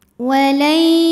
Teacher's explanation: Karena ada nun sukun menghadapi huruf ya. Cara bacanya nunnya masuk ke ya, walai disertai bunyi dengung, tahan. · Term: idgham bi gunnah naqis